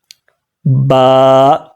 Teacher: دونوں ہونٹوں کے اندرونی حصے جب آپس میں ملتے ہیں تو اس سے با ادا ہوتی ہے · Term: با کا مخرج